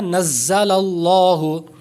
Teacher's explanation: جیسے ہم پڑھتے ہیں نا، نزل اللہ، زا ہے اس میں تو سیٹی کی آواز پیدا ہوتی ہے